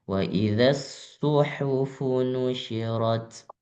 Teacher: Fu-nya jangan sampai panjang.